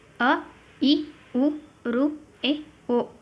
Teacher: ಒಂದು ಮಾತ್ರಾ ಕಾಲದಲ್ಲಿ ಉಚ್ಚರಿಸಲಾಗುವ ಸ್ವರಗಳಿಗೆ ರಸ್ವ ಸ್ವರಗಳು ಅಂತ ಕರೀತೀವಿ ನಾವು ಒಂದೇ ಒಂದು ಮಾತ್ರ ಕಾಲ ಅ ಬಹಳ ಹೊತ್ತು ತಗೊಳ್ಳಲ್ಲ ನಾವು ಅದನ್ನ